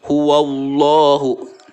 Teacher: Nah, lafadz Allah tersebut sebelumnya ada huruf yang berharokat fathah atau ada harokat fathah. Maka cara membaca lafadz Allah tersebut harus dibaca tebal, tafhim. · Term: tafkhim